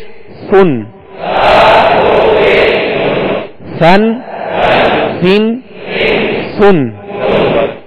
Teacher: बिल्कुल नरम हवा से ये अदा होता है, इसमें सख्ती ना हो, सीटी की आवाज पैदा ना हो।